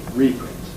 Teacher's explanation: the result is a reprint, where there's no pre-fortis clipping of E